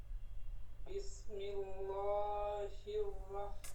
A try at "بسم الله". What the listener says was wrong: বিসমিল্লাহ হইলে আল্লাহ শব্দটা মোটা হয়ে গেল। বিসমিল্লাহ হবে লা, বিসমিল্লাহ।